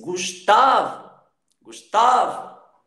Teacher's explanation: a sílaba tônica da palavra Gustavo é tá.